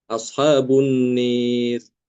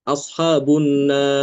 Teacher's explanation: Kalau yang Imam Aduri karena dia membaca imalah maka rnya dibaca tipis